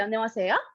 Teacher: And when you say any question or when you say anything negative in Korean, you use something called a rising intonation, which is a very fancy way of saying that you basically just say the very last syllable a little bit louder